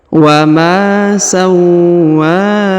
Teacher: Huruf wa ditahan dan ditekan lalu dipanjangkan 2 harokat karena di atasnya terdapat alif.